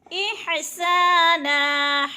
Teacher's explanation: احسانا، سا پہ الف مدہ، الف خالی سے پہلے سین کے اوپر زبر ہے تو الف مدہ یعنی ایک الف کے برابر کھینچ کر پڑھنا ہے